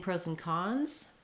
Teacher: And when I'm saying pros and cons, the stress falls on the last content word there, cons. So pros and is going to be a little faster than cons.